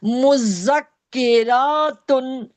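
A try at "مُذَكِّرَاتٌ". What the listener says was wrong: ये रॉ नहीं, मुजक्किरातुन खींचती क्यों है, जबर जेर पेश को खींचना नहीं है। मुजक्किरात। तुन कहाँ से आ गया, ता तो है नहीं यहाँ पर। कहाँ है उल्टा पेश।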